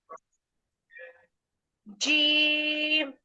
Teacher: আহ, জিহ্বার মাঝখান উপরের তালুর সাথে লাগে।